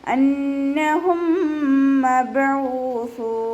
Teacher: മീം സാക്കിനയ്ക്ക് ശേഷം മീം തന്നെ വന്നതുകൊണ്ട് ഇദ്ഗാം ചെയ്തു കൊടുക്കുക. സുക്കൂനായ മീമിനെ അടുത്ത മീമിലേക്ക് ലയിപ്പിച്ചിട്ട് ഒന്നയോടുകൂടി ഉച്ചരിച്ച് കൊടുക്കുക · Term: ഇദ്ഗാം ഷഫവി